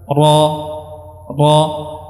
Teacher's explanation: pada ra yang tebal dia lidah menjadi kaku ya karena sifat tebal itu atau karena menaiknya meningginya pangkal lidah dan